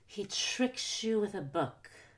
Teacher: tricks and book tricks as a verb book is a noun don't stress he or you because those are pronouns don't stress with because that's a preposition and don't stress ah because it's an article he tricks you